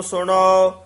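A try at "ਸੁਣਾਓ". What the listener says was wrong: ਸ਼ਰਵਨ ਗੋਬਿੰਦ ਗੁਣ ਸੁਨਾਓ। ਸੁਨਾਓ ਉਚਾਰਨ ਕਰਨਾ ਹੈ। ਆਮ ਸੁਨੋ ਕਹਿ ਜਾਂਦੇ ਨੇ ਹੂੜਾ ਲਾ ਕੇ।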